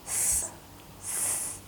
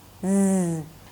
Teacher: The vocal cords are vibrating, just as the S is voiceless, S, and the Z is voiced.